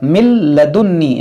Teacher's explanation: मिल लदुन्नी, देखिए मीम नून लाम ज़ेर मिल, अब ये नून लाम में दाखिल हो गया, इसे कहते हैं इदगाम।